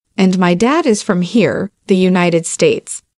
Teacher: tức là cái từ dad là một cái từ được nhấn này